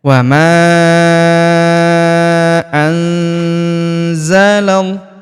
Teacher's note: Huruf ma kita panjangkan empat atau lima harakat. Karena di depan huruf ma terdapat alif yang di atasnya terdapat tanda garis bacaan panjang empat atau lima harakat yang ini ya. · Wa ma anzalal. Perhatikan huruf nun sukun bertemu huruf za, maka nun sukunnya melebur ke huruf za, kita baca dengung dan samar